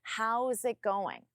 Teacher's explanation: even though there is no connection between it and going, I still don't pause between them. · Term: connect your words